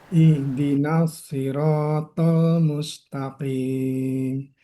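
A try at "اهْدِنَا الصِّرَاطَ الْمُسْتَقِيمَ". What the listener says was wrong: Ihdinas ditipiskan sedikit lagi. Ihdinas siratal mustaqim.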